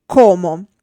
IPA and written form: ˈkɔmo (Como)